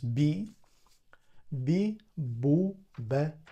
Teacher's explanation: ba b b is soft it's not like B and also when they say B they don't stretch their lips in Japanese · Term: voiced PA